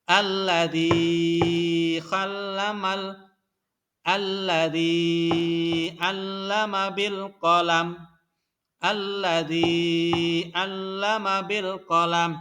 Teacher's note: Zi-nya dibaca panjang, 2 harokat atau 2 ketukan.